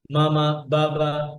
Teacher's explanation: বা is articulated by closing the two লিভস together but strong closing · ঠোঁট থেকে ঠোঁট থেকে একেবারে অন্য কোন কিছু এখানে নাই কোন দাঁত নাই